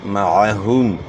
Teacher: ہا کی آواز جو ہے نا گلے کے آخر سے ہے ، پیش کو معروف ادا کرنا ہے، میم ساکن میں اظہار